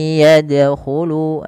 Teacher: huruf ya dan bunyi nunnya hilang, kemudian terdengar hanya bunyi ya-nya saja dan ditahan sepanjang 2 harakat